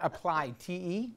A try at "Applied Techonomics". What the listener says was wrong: It's one word. That's what's messing it up.